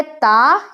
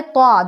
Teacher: تو ایک ہوتا ہے تا، ایک ہوتا ہے طا، دونوں کا مخرج سیم ہے، یعنی کہ ہماری جو زبان ہے وہ اوپر والے دانتوں میں ہی ٹچ کرے گی، لیکن فرق بس اتنا ہے کہ جب طا کو کہا جائے گا تو آواز بھاری کر لینی ہے۔ اسی وجہ سے فرق کرنا مشکل ہو جاتا ہے، کیونکہ مخرج دونوں کا سیم ہے، لیکن اس میں جو ہے آپ کو تھوڑا آواز بھاری کر کے پڑھنا ہے، آواز بھاری کرنا ہے، اور اس میں نرم رکھنا ہے، بالکل نارمل جس طرح پڑھتے ہیں۔